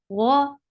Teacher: Ghain is heavy. The sound is short. For fatha, open your jaws.